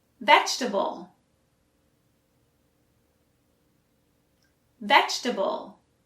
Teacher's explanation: this word has four syllables but we actually only pronounce three so we say vegetable we leave out the middle e let's